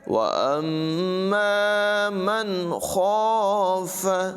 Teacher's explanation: نون ساکن کو ظاہر کر کے بغیر غننے کے پڑھا، اس لیے کہ اس کے بعد حروف حلقی ہے۔ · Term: اظہار